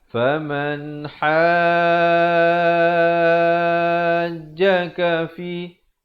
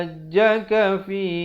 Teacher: Di sini hukumnya mad lazim kalimi musakhkhal, dibacakan dengan 6 harakat. Jangan baca 4, jangan baca 5.